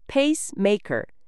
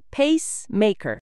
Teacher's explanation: maker랑 붙여서 강세는 pa랑 ma에 두고